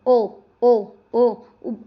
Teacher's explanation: अंदर ही अंदर आवाज आ रही है, कंठ और ओष्ठ, क्योंकि होठ भी तो अपना आकार बदल रहे हैं, ओ आपस में क्या हो रहे हैं, मुड़ रहे हैं।